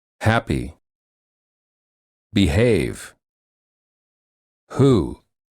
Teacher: for this sound the vocal cords are tense and restricted in the back of of the tongue is pushed against the throat to create friction as the air flows out from the back of the mouth